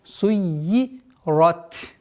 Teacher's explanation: После удвоения я применяем кесра